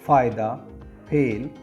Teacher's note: दंतोष्ठ्य व्यंजन फ तथा व ध्वनियाँ ऊपर के दांत एवं नीचे के ओंठ अधर के मिलने से उच्चारित होती हैं।